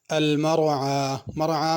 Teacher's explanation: مرعى میں بھی را کو پر کرنا ہے، عین صحیح ادا کرنی ہے، مرعا نہیں پڑھنا۔